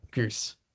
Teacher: in many varieties of English, this U vowel is actually moving forward. So this is why it's called goose fronting.